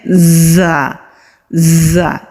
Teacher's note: सामने के जो दांत हैं उनके मसूड़ों पर मजबूती से लगाएंगे तो बजिंग साउंड यानी कि वाइब्रेशन वाली साउंड आती है